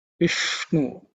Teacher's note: Vishnu, the ish is cerebral sha. Vishnu tongue should be pointing upwards.